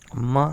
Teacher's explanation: ये ओष्ठ और नासिका ये मिलकर बोला जाता है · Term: पंचमाक्षर